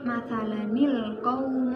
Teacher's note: tanwin di sini menjadi huruf tunggal kemudian ditambahin nun dalam pelafalannya